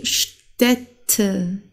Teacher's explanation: das ist wie eine Mischung zwischen A und E, das ist ein Ä